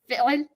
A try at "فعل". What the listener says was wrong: Fi'l. You're like choking yourself too much. Fi'l. Choke yourself a little less. Fi'l. Not choke yourself a little more. Fi'l.